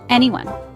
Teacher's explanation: It is a three-syllable word. Stress is on the first syllable.